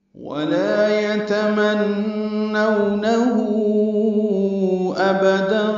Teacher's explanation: ہو پہ مد صلہ کبرا ہے، الٹا پیش ہے، اور اس کے بعد حمزہ آنے کی وجہ سے مد صلہ کبرا یا مد منفصل کہہ لیں